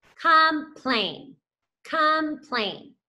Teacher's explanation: So you can see here, our syllable was divided right there. That O makes that lazy schwa sound because it is the not accented syllable.